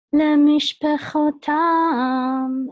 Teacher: the accent is at the end of the word